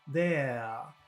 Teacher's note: in some types of English in the UK or maybe in Australia, they don't pronounce the R at the end of a word.